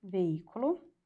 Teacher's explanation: a antepenúltima sílaba é a mais forte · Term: proparoxítona